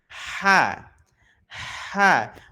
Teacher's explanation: Katupnya ini sedikit menekan pada bagian ee dinding tenggorokan dalamnya maka celah yang keluar itu mengecil ya sehingga suara yang keluar jauh lebih lembut